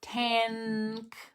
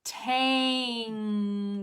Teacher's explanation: why does the n go to the back because the following letter is a k